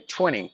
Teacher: they will silence the tea because usually in the English language the Americans they silence the T if it is combined with NT